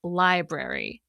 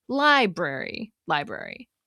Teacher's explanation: stressing the “I” sound and saying it more clearly than the “-brary” part. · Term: stress-timed